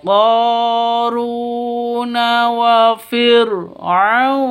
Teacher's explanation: ra-nya ra tafkhim atau ra tebal